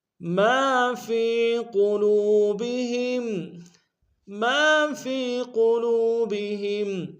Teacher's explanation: ما فی قلوبہم، ما فی قلوبہم، میم کے ساتھ الف مدہ ہے ایک امتداد میں کھینچیں گے الف مدہ کو، فا یا کے ساتھ ملائیں گے، یا مدہ ایک امتداد میں کھینچیں گے، قوف کو موٹا ادا کریں گے